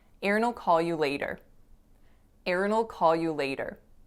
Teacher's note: the w totally disappears the it becomes more of a schwa blending with that dark